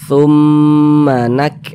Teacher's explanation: Nun bertasydid mim bertasydid hukumnya gunah musyaddadah